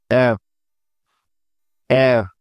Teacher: নিচের ঠোঁটে আলতো করে কামড় দিয়ে উচ্চারণ করতে হয় এফ এফ এই বর্ণটা উচ্চারণ করার সময় খানিকটা বাতাস দাঁতের ফাঁকা দিয়ে বের হয়ে আসবে